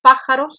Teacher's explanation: la sílaba tónica está en la antepenúltima posición